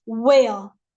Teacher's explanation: Some people pronounce it where, E and their R is gone, where.